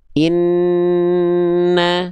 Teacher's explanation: karena ada suara yang harus melimpir dulu ke hidung baru keluar vokalnya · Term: gunah